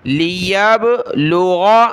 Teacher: غین نکالیں گلے سے، اس کی جگہ آپ نے گاف نہیں پڑھنا